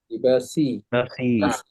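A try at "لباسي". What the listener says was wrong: লিবাসি। ইয়া তো একটু টান দিব, লিবাসি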